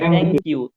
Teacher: অর্থাৎ জিহ্বার আগা দাঁতের আগার সাথে লাগে, যেটা আরবিতে তা বলছি, ঠিক সেম টি এইচ এর উচ্চারণটা অনেকটা এরকম।